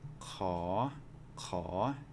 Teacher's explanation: when we say this one caw-caw it's actually a rising tone so it doesn't have any kind of a tone mark and yet it's a rising tone